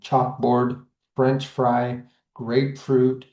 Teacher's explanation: In spondees, both parts of the word are stressed. So we get two stressed syllables together.